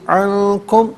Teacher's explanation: کشف الضر عن، علیحدہ ہے، کم علیحدہ ہے، ملا کر پڑھیں گے عنکم، یہاں عن میں نون ساکن پر اخفا کریں گے، اخفا ناک میں آواز لے جا کر گنگنانے کو کہا جاتا ہے۔